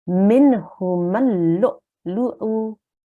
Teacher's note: So we just looked at this in today's class, hamza with a sukoon, and we need to make a soft jerking sound when we join that.